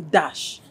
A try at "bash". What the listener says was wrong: Bash. It's bash, not dash. Bash.